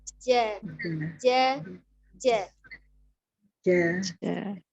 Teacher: Ini ya, ada tertera gambar hitam. Tengah lidah bertemu dengan langit-langit tengah. Disinilah tempat kita mengeluarkan huruf jim.